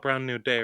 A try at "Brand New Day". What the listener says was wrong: Did you just say Brown New Day? You just said Brown New Day.